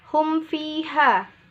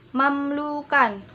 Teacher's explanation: mim disuarakan dengan terang dan jelas di bibir serta mulut tertutup. Dan harus lebih diperjelas lagi bila mim sukun bertemu dengan huruf waw dan fa. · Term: izhar safawi